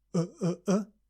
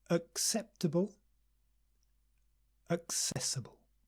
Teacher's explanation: reliable incredible impossible desirable invisible remarkable respectable responsible predictable and notice the first two words begin with schwa do you remember the stupid caveman uh relax the lips relax the mouth uh acceptable accessible again slowly acceptable accessible not acceptable accessible no